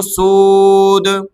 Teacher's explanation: یہاں دیکھیں دال دو پیش دن سودن جب رکیں گے تو سود